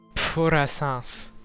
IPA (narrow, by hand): p͡ɸo ra'sɛ̃s